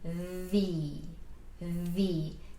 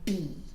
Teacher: I'm biting my lip a little bit with my teeth.